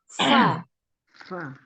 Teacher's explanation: Makhrajnya huruf fa adalah ujung gigi seri atas bertemu dengan perut bibir bagian bawah.